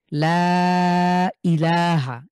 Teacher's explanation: লাম আলিফ জবর লা মাদে হরফে এক আলিফ এরপরে লম্বা হামজা হয়েছে তাহলে ইল্লাকে আমরা তিন আলিফ টেনে পড়বো